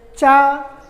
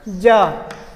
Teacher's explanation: Affricates are there, cha and ja. The first one is voiceless and the second one is voiced.